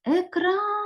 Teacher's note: куди падає наголос на другий склад тобто другий склад у цьому слові наголошений